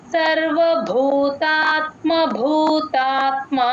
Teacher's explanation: ఇక్కడ రెండు భాలకి మహాప్రాణం ఉంది గమనించండి · సెకండ్ భూతాత్మలో మాత్రం మా కి దీర్ఘం వస్తుంది రెండు గమనించుకోండి సర్వభూతాత్మ భూతాత్మ సర్వభూతాత్మ భూతాత్మ సర్వభూతాత్మ భూతాత్మ సర్వభూతాత్మ భూతాత్మ కుర్వన్నపినలిప్యయతే